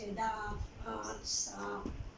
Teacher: इसे नाक और गले दोनों से बोला जाता है